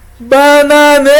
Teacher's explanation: Qual sílaba que se prolongou? o ne, exatamente, a sílaba tônica é o ne.